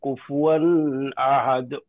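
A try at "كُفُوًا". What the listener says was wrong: ওকে, তারপরেও হালকা একটা গুন্নার মতো শোনা যাচ্ছে, কিন্তু গুন্না কোনোভাবে হওয়া যাবে না।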